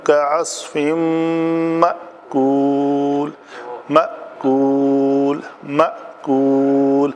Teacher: हाँ जी, इस झटके को और आइन को मुख्तलिफ तरीक़ों से अदा करना है। ये होगा हमज़ा है, इसको आइन नहीं बनाना झटका देते वक़्त।